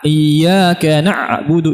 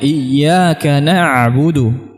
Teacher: huruf ain dia merapat tapi dia kembali lagi. A a jadi bukan a. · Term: bainiyah